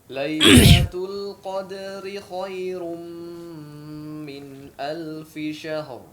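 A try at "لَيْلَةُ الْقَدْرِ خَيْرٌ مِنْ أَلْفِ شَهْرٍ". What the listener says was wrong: Baik, perhatikan huruf ra yang bertemu dengan huruf mim, ya. Khairu, ru. Nah, di sini ditebalkan, jangan hanya bergetar saja, ya.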